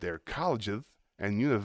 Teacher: you're giving me a th sound instead of a nice clear s